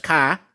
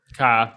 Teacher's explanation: Boston is famous for dropping R's